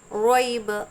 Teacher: رو کو منہ بھر کر پڑھیں گے